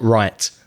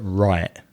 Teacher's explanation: he said the word right and he didn't pronounce the T at the end